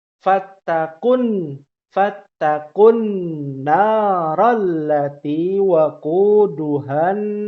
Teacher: aslinya kan waquduhan 2 harokat tadinya kan ya, mat tabi'i, tapi karena bertemu dengan alif lam maka menjadi dibacanya tidak panjang